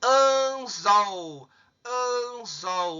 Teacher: O mais forte aqui é o zol.